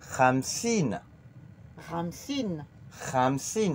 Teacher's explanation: avec le R raclé au fond de la gorge. Le 5 et le KH remplacent le R raclé au fond de la gorge.